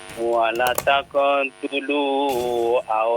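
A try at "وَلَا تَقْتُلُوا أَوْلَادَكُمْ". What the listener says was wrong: Lihat panjang pendeknya, Pak. La-nya panjang itu ya, Pak ya. Dibaca 2 harokat ya.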